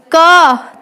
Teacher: कै वर्ग बोला जाता है कंठ से, वो भी कंठ से इसलिए बोला जाता है क्योंकि क और ए की आवाज कहाँ से आ रही है निकलकर, कंठ से।